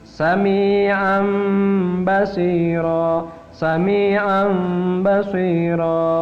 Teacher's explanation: bibir kita tidak rapat tapi ada celak sehingga berbunyi menyerupai mim. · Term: iqlab